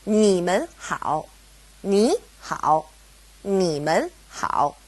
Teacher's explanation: It's a toneless tone, or a neutral tone, mun. Now, because we have mun separating ni and hao, they both go back to being third tone.